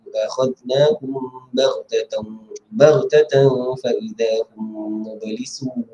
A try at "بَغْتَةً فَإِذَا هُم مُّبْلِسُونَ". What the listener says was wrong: Baghtatan. Tengok mulut Miis. Baghtatan. Fa, dia nak sebut fa kan? Baghtatan. Fa. Kalau Ustaz Y dia kata dia nampak gigi tu. Baghtatan. Fa. Jangan buat tatang tak nampak gigi.